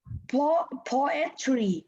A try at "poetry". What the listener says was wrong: Not poet. Poetry.